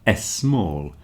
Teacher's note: words like small, stupid, school, etc., you tend to put a little e in front of it. So a word like small, you say s small.